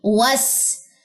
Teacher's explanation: واو کی زبر ڈائریکٹ آ کے سین کی تشدید کے ساتھ ملے گی، وس۔ اس کے بعد سین کے اوپر ہمارے پاس زبر ہے، آپ نے سین کو کسی صورت بھی لمبا نہیں کرنا۔